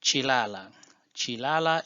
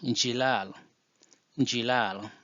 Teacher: we normally drop the CH sound and change it to J sound